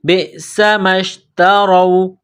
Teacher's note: را کے اوپر زبر ہے، را کو موٹا کرنا ہے